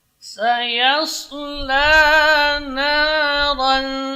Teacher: ra tebal, tapi ikhfanya tipis karena tanwin ketemu dengan za huruf tarqiq